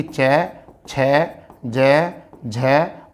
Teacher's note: स्पर्शी संघर्षी जो होते हैं वो च वर्ग होता है